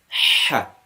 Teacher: Whereas ha is from the middle part of the throat, as we saw. We are capturing the air in the middle part of the throat and putting some more emphasis in it.